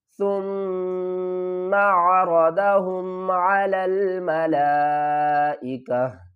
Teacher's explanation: میم مشدد ہے، اس کے اوپر گنہ کریں گے۔ میں نے آپ کو ایک بات بتائی تھی کہ اگر قرآن پاک میں کہیں بھی میم مشدد نون مشدد آ جائے تو وہاں پر ہم گنہ کریں گے۔